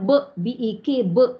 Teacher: Dan ada sifat qalqalah kubra kalau, bukan pada ayat ni ya, pada perkataan sahaja. Qalqalah kubra pada ba berbaris, kita matikan dia, maka bunyinya b-e-k, b.